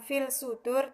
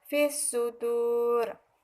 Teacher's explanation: Cara membacanya yaitu dimasukkan alif lam itu ke dalam huruf shad tersebut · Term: idgham syamsiah